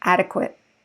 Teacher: i didn't say verbs the primary stress is the same but we don't have the eight sound we have the it sound